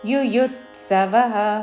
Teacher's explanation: సమవేతా యుయు రెండవ యు మీద ఆఘాత పలుకుతూ